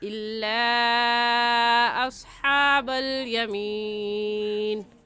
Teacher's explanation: इस मद को हम 3 अलिफ के बराबर खींच कर पढ़ेंगे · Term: मद्दे मुनफसिल